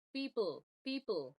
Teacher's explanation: We want to go from the P straight into the dark sound, where the tongue is pulling back, not a schwa, because the schwa, in the schwa, like the tongue is neutral, but we don't want that. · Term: dark L